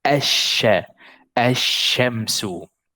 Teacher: you will completely ignore the lam and you will make this letter in shadda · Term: complete merging